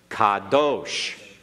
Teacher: Make sure you get that ah in there very clearly. Don't shorten it, because it sounded like you were making a short half vowel, like kadosh.